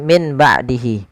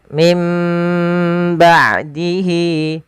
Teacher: suara nunnya diganti dirubah menjadi huruf mim. Nah, ini maka dituliskan dengan mim kecil di atas. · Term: iqlab